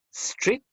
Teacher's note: they began the words with s sound not with an e sound